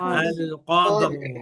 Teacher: Jadi tidak dibaca alqad alqad tanpa rnya terbaca.